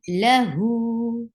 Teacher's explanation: La is short. Hu is 2 counts long.